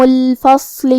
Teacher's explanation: کلمت الفصل میں یہاں حرف الصاد ہے. صاد حروف التفخیم میں سے ہے، لہذا ہم صاد کو بھاری آواز میں پڑھیں گے